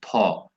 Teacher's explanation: আর এটা যেহেতু ত থ সেকেন্ডে পড়তেছে তার মানে এটা অঘোষ, তাহলে থ হচ্ছে অঘোষ মহাপ্রাণ